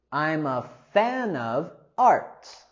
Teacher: We can also use our linking here between I'm a and also fan of